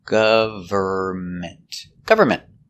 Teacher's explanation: The N is silent. Don't pronounce the N.